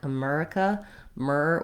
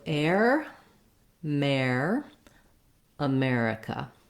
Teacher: probably the main error that i hear on america is that people will say it more like america myrrh with more of an er vowel instead of the air diphthong so building from the air and putting that into the word · the letters er say the air diphthong in this word